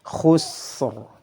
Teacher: Sinnya memiliki sifat hams, rakhawah. Adapun ra memiliki sifat jahar, nafasnya ditahan suaranya dialirkan, dan sifat takrirnya dilafalkan. · sebelumnya ada huruf sukun dan sebelumnya lagi ada harakat dhammah, maka harus dibaca dengan tebal. Khusr. Ra-nya dialirkan, sinnya juga dialirkan. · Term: dihukumi tafkhim